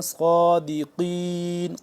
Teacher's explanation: صاد کھڑا زبر صا موٹا بھی کریں گے اور لمبا بھی کریں